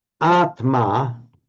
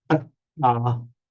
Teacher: Now, by regular phonetic mutation, Atma becomes Atta in Pali. So the consonant cluster Tma just resolves to a double T in Pali.